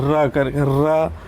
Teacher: इसके अलावा आप लोग ध्यान में रखिएगा, ये जो र है उसको क्या कहते हैं, जब भी हम लोग र का उच्चारण करते हैं आपको देखना जीभ में कंपन होती है, र कर र, जीभ में कंपन के साथ हवा बाहर आती है, इसीलिए इसको क्या कहते हैं, प्रकंपित वर्ण कहते हैं।